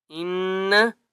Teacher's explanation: نون کے اوپر تشدید ہے، غنہ کریں گے